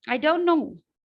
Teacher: the t is completely gone